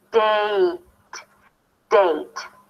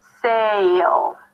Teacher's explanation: add a y sound at the end, as a y as in yes